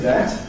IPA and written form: dæt (that)